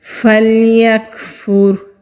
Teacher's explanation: را ساکن سے پہلے پیش ہے تو را کو موٹا پڑھیں گے